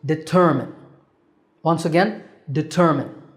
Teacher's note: determine this is not determined there's no mine here it's determin with a stress on the second syllable